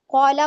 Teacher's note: काला को हमने टू काउंट पढ़ना है। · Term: मद